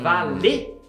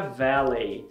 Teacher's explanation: Como no francês a gente fala E, e no inglês não existe a vogal E, eles adaptaram para EI. Então a palavra valet do francês, que é aquele cara que fica lá para guardar seu carro, na fonologia inglesa adaptaram para valet.